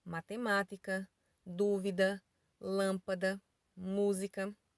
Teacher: As palavras proparoxítonas são palavras que a antepenúltima sílaba é tônica.